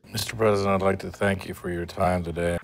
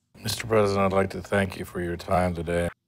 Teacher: the words Mr thank and time receive the stress